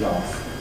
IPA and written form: lɑːf (laugh)